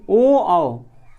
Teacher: ओ और औ का उच्चारण स्थान कंठोष्ठ में, यानी कंठ और ओष्ठ से हो जाएगा